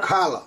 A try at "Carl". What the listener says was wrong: Carl. Not Carla, just Carl. Carl. Carl. Carl. No. No, no, no, no. Carl. You don't need to add. It's just breaking it up a little bit. Carl.